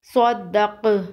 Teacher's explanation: صاد دال زبر صد، دال زبر دا، صد دا، قاف زبر قا، صدق، وقف صدق۔ وقف کی صورت میں قاف پر قلقلہ کریں گے۔ قاف حروف قلقلہ میں سے ہے۔